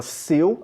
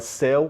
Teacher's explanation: Na palavra seu, a pronúncia é eu. Então esse seu, o ditongo é fechado. Na palavra céu, o ditongo é aberto.